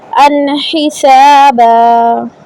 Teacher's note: جزاء من ربك عطاء حسابا. یہاں پہ غنہ نہیں ہوگا، آگے حروف حلقی ہے